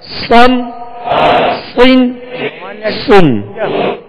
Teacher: 2 ज़बर और 2 ज़ेर में होंठों को गोल भी नहीं करेंगे, और इसको पुर भी पढ़ना है, मोटा भी पढ़ना है।